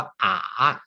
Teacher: เสียง3ให้คล้ายกับเสียงเอกแต่ว่ามีคลื่นนิดนึงนะครับ